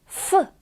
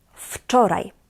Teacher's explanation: Please note that the W here in this word is pronounced as F.